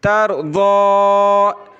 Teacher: آگے دیکھیں، تَرْضَىٰ، تَرَا زبر تر، ضاد کھڑا زبر ضا، تَرْضَىٰ، اس کھڑا زبر کو ایک الف کی لمٹ میں اوپر کھینچا جاتا ہے، تو اس کو کھینچیں گے، یا کو ہم نے نہیں پڑھنا، کیا پڑھیں گے؟